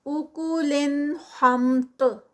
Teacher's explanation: تا جو ہے وہ ہیوی ہے اور پھر اینڈ پہ اس کا کلکلا ہوگا جب اس کو سٹاپ کریں گے